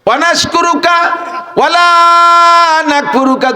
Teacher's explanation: এই ওয়ালারে কমপক্ষে একালিফ লারে টানতে হবে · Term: মদ